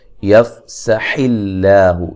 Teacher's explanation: لفظ اللہ کو باریک پڑھیں گے، اس سے پہلے زیر ہے